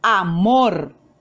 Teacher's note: La mayor fuerza de voz la hacemos en la sílaba mor. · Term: sílaba tónica